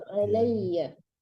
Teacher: فتبسم ضاحكا من كل فتبسم فتبسم ضاحكا من قولها وقال رب أوزعني أن أشكر رب أوزعني أن أشكر نعمتك التي أنعمت على alaihi, bukan lamnya yang tasdid tapi iyanya